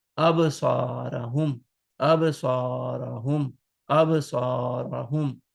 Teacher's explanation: absarahum, absarahum. So ba is one of the huruf kalkala. So we will do kalkala and we will shake the sound of ba